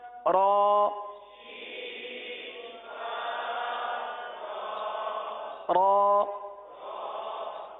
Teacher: را کی ادائیگی کے لیے زبان کا تالو کی طرف اٹھنا ضروری ہے، مائل ہونا ضروری ہے، تبھی یہ تکرار کی آواز آئے گی